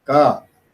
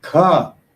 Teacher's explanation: that is a small breath in ka, but in kha, there is more breath, maha prana. So you have aspiration.